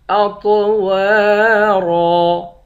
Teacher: اطوارا، طا اور را ان دونوں حرف کو موٹا پڑھیں گے۔ واو کے بعد الف ہے، الف حروف مدہ ہے، ایک الف کے مقدار کھینچیں گے۔ آخر میں دو زبر کی تنوین ہے، دو زبر کی تنوین میں جب وقف کرتے ہیں ایک زبر بن جاتا ہے۔